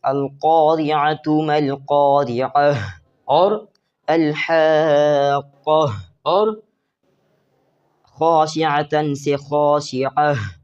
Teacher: ٹھیک ہے، یہ تائے مدورہ ہے، ہا والی تا ہے، اسے وقف میں ہا بنا کے پڑھنا ہے